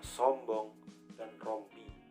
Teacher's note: Direalisasikan sebagai bunyi O besar jika beronset dan berkoda